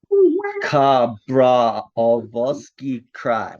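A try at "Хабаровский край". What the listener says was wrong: Kabarovsky Cry. But there's there's extra vowels.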